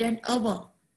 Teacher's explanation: The H at the beginning of hour is silent